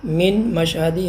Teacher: تو نون ساکن کا میم کے حرف میں ادغام کر دیں گے